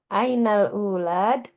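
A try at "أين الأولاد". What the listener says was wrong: Ainal aulad. Ya, bukan ulad. Aulad.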